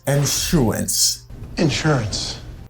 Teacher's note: Here letter S sounds like a sh sound. Okay? Let S là li bam yon son sh like in shirt.